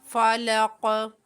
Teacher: جب آیت مکمل ہوگی قاف ساکن ہو جائے گا، قاف کے اندر بھی قلقلہ ہوگا